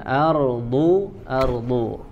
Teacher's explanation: makhraj ataupun sumber suaranya dari bagian Sisi lidah ya ardu ardu ya dari hafatul lisan boleh bagian kiri ataupun